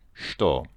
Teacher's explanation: there are a few cases where it makes a sh sound, and this is one of them